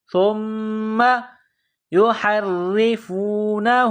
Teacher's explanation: سا کو میم کے ساتھ پلس کرنا ہے، میم میں غنہ کرنا ہے۔